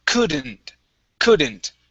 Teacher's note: the L is silent. We're only going to pronounce the D and the N.